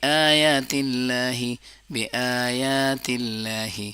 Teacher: बी आया दोनों को बराबर लंबा कर लेंगे